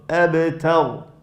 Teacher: Okay, ta light, ra heavy here.